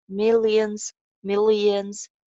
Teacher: L sound ko mota karke bolenge.